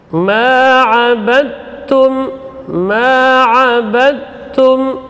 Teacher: qalqalahnya tidak ada lagi karena huruf dalnya sudah dimasukkan ke dalam huruf ta, idgham, ya, yang berdekatan.